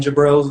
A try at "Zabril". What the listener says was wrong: It's Zabril, Zabril. Zabril. Zabril with a Z.